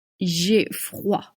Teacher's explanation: Again, wa sound. Don't pronounce the D at the end.